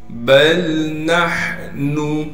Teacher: ہا کو صاف کر کے پڑھیں گے گلے سے، گلے کا وہ حصہ جو سینے کی جانب ہے